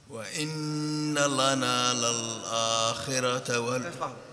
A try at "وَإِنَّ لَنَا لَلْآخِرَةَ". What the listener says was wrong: لام هذه مرققة هذه. وَإِنَّ لَا لسان تحت. معلش قل رقق اللام.